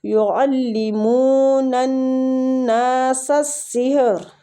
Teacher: یعلمون الناس السحر، منہ وہ مد ہو رہی ہے کھینچیں گے. نن ناسا غنہ کریں گے، نون مشدد ہے آگے اور الف مد بھی ہے، نون کو کھینچیں گے بھی. سحر، سین کو سین کے ساتھ ملاتے ہوئے پڑھیں گے اور را پور پڑھیں گے فتح کی وجہ سے.